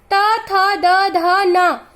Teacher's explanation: इसे दंत व्यंजन कहा जाता है क्योंकि जब हम इस वर्ग का उच्चारण करते हैं तो हमारा जीभ हमारे दांत से टकराता है, इसलिए इसे दंत व्यंजन कहा जाता है।